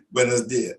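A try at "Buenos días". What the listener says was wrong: How do you, okay, well, the accent, there's an accent over the I, yeah, so you're going to stress where you see the accent. So because there's an accent over the I, the pronunciation is buenos dias. Not buenos dias, not buenos dias. No, there's an accent over the I, and you have to stress where you see the accent. Buenos dias.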